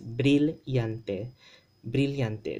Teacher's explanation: the two L's make the LY sound in Philippine Spanish, okay? As well as in the standard Spanish dialect.